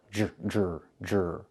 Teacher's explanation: The DR makes a J sound like in juice and jump. Plus the R, J, Jr, Jr.